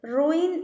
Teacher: റൂയിൻ എന്ന word, ഇവിടെ ഈ എന്ന് പറയുന്ന ഒരു സൗണ്ട് ഇല്ല. ഉ ആൻഡ് ഇ രണ്ട് സൗണ്ടാണ്. ഓക്കെ, റൂ ആൻഡ് ഇൻ, ഇവിടെ 2 വവൽ സൗണ്ട്സ് ഉണ്ട്.